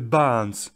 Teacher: Là, on prononce pas le R.